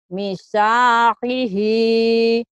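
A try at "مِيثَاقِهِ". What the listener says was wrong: Yang panjangnya mi-nya Bu. Ini ki ya Bu. Ini. Mithaqihi.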